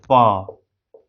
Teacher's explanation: लेकिन आप बोल के देखिएगा प, बहुत कम घर्षण होगा, नहीं कि प और अ बोलकर देख लीजिए, प में कितना घर्षण, अ में कितना घर्षण, अ में ज्यादा घर्षण हो रहा है, प में घर्षण नहीं के बराबर होगा, इसलिए वॉइसलेस हो गया प